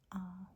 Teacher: It is the ah sound, so it's completely open in front.